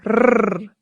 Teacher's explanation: Remember that the double R in Spanish is rolled